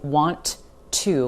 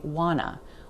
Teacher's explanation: The next reduction here, want to reduces to wanna. But that T sound totally disappears. We don't say want to, we say wanna.